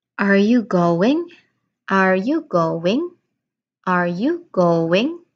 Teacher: Your voice rises at the end because it's a question. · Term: rising intonation